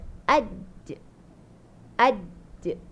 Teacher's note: Dia kuat tertahan suara dulu. Mati dekat dia punya makhraj dulu. Baru dia lantun je tu.